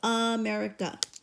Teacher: none of them say ah which is the original sound for the short vowel for a instead of AA they all say uh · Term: the schwa